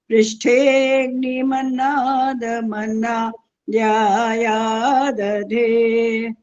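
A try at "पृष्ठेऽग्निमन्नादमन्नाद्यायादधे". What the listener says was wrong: हमने एक जगह गलती कर दी है, वहां आपने बोला पृष्ठे अग्नि बोल दिया। पृष्ठे अग्नि नहीं बोल सकते हाँ, पृष्ठेऽग्नि ऐसा बोलना होता है।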